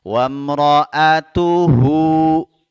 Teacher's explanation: ini cukup dua harakat ya karena bertemu selain Hamzah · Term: Madah qasirah